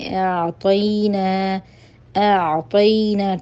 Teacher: یا ساکن کی حالت میں اس کے پیچھے حرف کے اوپر زبر ہے تو یا لین ہے، اس کو ہم نے باریک پڑھنا ہے